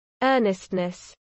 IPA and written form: ˈɜːnɪstnəs (earnestness)